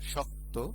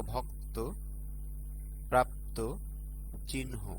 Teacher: শব্দের শেষে সংযুক্ত বর্ণ থাকলে অন্ত অ ওকার উচ্চারিত হয়।